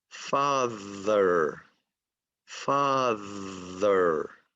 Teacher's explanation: that's a TH with voice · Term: TH with voicing